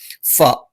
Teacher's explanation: മേലെ മുൻപല്ലിന്റെ താഴ്ഭാഗം താഴെ ചുണ്ടിന്റെ പള്ളയിൽ വെക്കണം